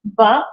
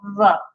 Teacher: So Beith, with the Dagesh Lene, we pronounce it as a B sound. Without the Dagesh Lene, we soften the pronunciation so it sounds very much like our V in English.